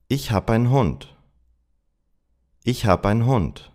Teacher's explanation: I knocked off the final first person e of hab and there is a vowel reduction in the unstressed en suffix of h.